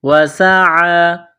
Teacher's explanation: سین میں سیٹی کی آواز پیدا کرنی ہے، سین کو باریک کرنا ہے ، وسع، عین کڑا زبر ع، ایک الف کے لمٹ میں